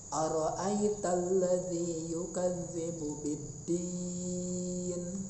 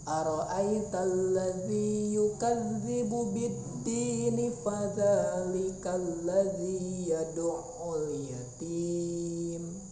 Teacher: Nah, kalau kita berhenti ara'aital ladzi yukadzibu biddin, berhenti di biddin itu 6 harokat. Kalau disambung jadi 2 harokat. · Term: mad arid lisukun